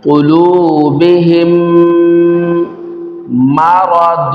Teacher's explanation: میم ساکن کے بعد دوسری میم آ رہی ہے، یہاں پر میم ساکن کا قاعدہ ہوگا ادغام شفوی غنہ کر کے پڑھیں گے